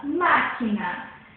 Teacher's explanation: O má é acentuado e é a sílaba falada com mais intensidade, mais alto, mais intensa. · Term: sílaba tônica